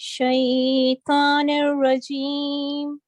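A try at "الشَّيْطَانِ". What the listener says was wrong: Sorry, आऊज़ु बिल्लाहि मिनश शैतो, ता और तो में फर्क होना चाहिए.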